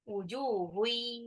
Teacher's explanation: tanwin ketemu ya, itu idgham bi gunnah, dileburin tapi ditahan. Wujuhui, ditahan itu.